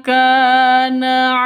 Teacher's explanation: ka panjang dua ketukan karena ada alif diawali dengan fathah. Alif sebelumnya fathah. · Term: mad asli